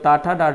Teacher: जो टा डा होता है मूर्धा से होता है